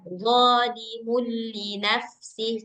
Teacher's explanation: Dia kalaupun ada gunnah, Mbak, dia tuh nggak sampai yang 2 harakat itu dia. Nah, dia sedikit aja.